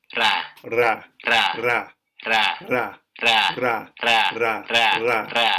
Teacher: It's called an alveolar tap, I think.